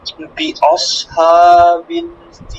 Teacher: এই ফিলটা একটু বেশি করে টানতে হবে, কারণ এটার মধ্যে আর 3 আলিফ টানতে হয়।